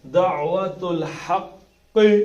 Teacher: ہا اوپر کے حلق سے نکلے گا. دعوت الحق، قاف موٹا.